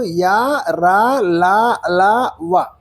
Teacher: ఎందుకు అంతస్తములు అంటున్నామంటే, అంతస్తము అంటే లోపలి స్థితిలో ఉన్నా అని అర్థం. ఎందుకంటే వీటిని ఉచ్చరించేటప్పుడు గాలి పూర్తిగా అడ్డుకోబడదు, పూర్తిగా బయటకు రాదు